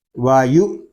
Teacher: حمزہ ساکنہ کو جھٹکا دے کر پڑھیں گے